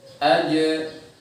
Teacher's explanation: kalau jimnya sukun maka harus dipantulkan, mengingat tadi ada sifat qalqalah. Jadi saat sukun jim tersebut maka dipantulkan. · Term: jim sukun